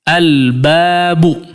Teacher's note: disitu terdengar betul-betul jelas terdengar huruf lam terucap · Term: Alif Lam Qomariah